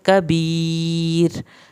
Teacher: कबीर, यहाँ पर कबी या साकिन को खींचें और आखिर में जब रा पे वक्फ होगा, रा पतली पड़ी जाएगी